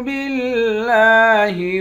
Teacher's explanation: لام پر کھڑا زبر ہے، کھڑے زبر کو بھی ایک الف کی مقدار کھینچ کر پڑھتے ہیں۔